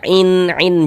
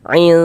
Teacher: Jadi bunyi non sukun atau bunyi tandwun itu dibaca samar ya dengan kita bersiap-siap masuk ke dalam huruf ikhfanya. Jadi baca samar. Kemudian disertai dengan dengungan, disertai dengan ghunah. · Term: ikhfa hakiki